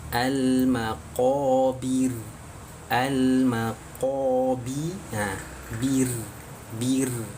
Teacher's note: kalau huruf ra sukunnya sebelumnya ataupun didahului dengan harakat kasrah maka harus dibaca tipis